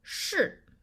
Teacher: For the fourth tone, the last one, it's very the strong falling tone, yeah? It's quite quicker than the previous one